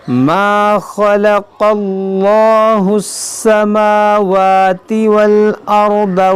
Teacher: خا اور قاف حروف مشتعلیہ ہے، موٹا پڑھیں گے، اور یہ اس میں جلال سے پہلے زبر ہے تو اس کو موٹا پڑھیں گے.